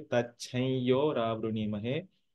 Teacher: you don't pronounce an anuswara completely. For example, we don't say tacham yo ravruni mahe, but we say tachai yo ravruni mahe.